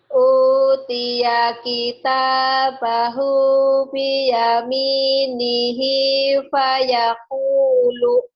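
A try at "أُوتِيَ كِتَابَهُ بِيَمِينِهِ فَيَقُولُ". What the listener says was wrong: Lagunya lucu. Jangan dientek-entek ya, jangan di apa ya. Ini datar aja dulu. Utiya kitabahu biyaminihi fayaqulu gitu.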